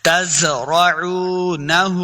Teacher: دیکھیں نون کے اوپر الٹا پیش اور مد بھی ہے تو ہم نے اس کو لمبا کر کے پڑھنا ہے